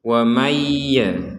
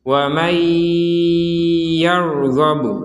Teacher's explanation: Maka dari yang jelas ini kita masukkan nun sukun ini kepada huruf ya sehingga terbacanya langsung wa mayya seperti itu dan disertai dengungan sehingga menjadi wa mayyarghabu dan seterusnya. Jadi wa mayya ada dengungan di rongga hidung kita itu.